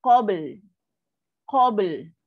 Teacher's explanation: So lam bila last lidah kita akan ternaik. Parking dekat makhraj huruf lam.